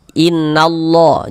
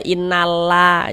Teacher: Ee jadi lafaz Allahnya, huruf lam jalalahnya itu kita baca tabkhim, kita baca tebal